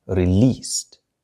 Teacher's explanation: لا تنطق ت في جميع الأفعال, لكن فقط في الأفعال التي تنتهي بصوت يسمى voiceless sound, حيث أن الأحبال الصوتية لا تتزعزع, لا تهتز عندما ننطق هذا الحرف س. لذلك فنحن نضع ت, لأن الت كذلك حرف a voiceless sound, لا تهتز فيه الأحبال الصوتية.